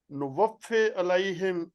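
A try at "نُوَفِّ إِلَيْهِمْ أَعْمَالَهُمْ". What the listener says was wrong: الف کے نیچے زیر ہے. الیہم، الیہم.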